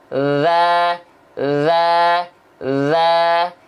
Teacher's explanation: antara tsa dan dalal kalau dilafalkannya sama bedanya dari segi nafas kalau dalzal enggak keluar nafas nama sifatnya adalah jahr